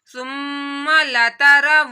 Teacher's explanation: ہا حلق کے نیچے والے حصے سے اور الف سے پہلے زبر آ رہی ہے تو الف مدہ کرنا ہے.